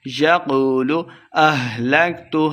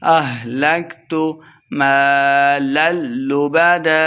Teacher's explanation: ہا کو حلق کے نچلے والے حصے سے ادا کریں گے